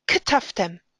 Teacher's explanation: a shva is a murmuring sound, a shvana, at the beginning of a word